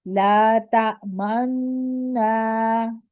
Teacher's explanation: جب نون کو مشدد دیکھیں، یہاں دو نون ہے نا، ایک میم سے نون کو ملا رہے ہیں تب منہ کو گول کرنا ہے، اور جب نون کو الف کے ساتھ ملا کے پڑھ رہے تب منہ کو گول نہیں رکھنا ہے